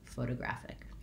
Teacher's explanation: In American English, that T between those two unstressed syllables becomes more of a flap, sounds like a light D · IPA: /ˌfoʊtəˈɡræfɪk